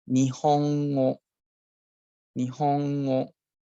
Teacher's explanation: style 1 would start off with a low pitch, okay, and then on from the second character or the second mora onwards, it will go high all the way, and it will stay high until the end of the word.